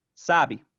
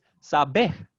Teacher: we've got a stress shift from first syllable in sabe to second syllable in saber